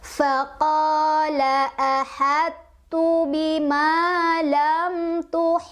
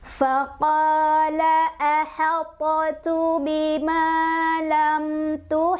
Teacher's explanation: ketika bertemu dengan tak pantulannya sudah tidak terdengar karena kita langsung memasukkan pembacaan huruf pertama yaitu Hai ke dalam